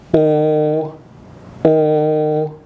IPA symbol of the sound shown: o